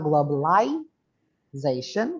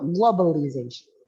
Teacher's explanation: kalau yang British itu lie, kalau American lee